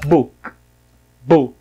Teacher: tem o K fraquinho no final. Book.